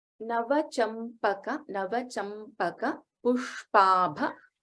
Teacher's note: in pushpabha, sha is shanmukha sha and bha is a mahapranakshara. Sha and bha we have to note.